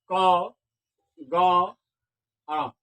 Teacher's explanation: इन तीनों का उच्चारण करने के बाद हकार की ध्वनि नहीं होती है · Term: अल्प प्राण वर्ण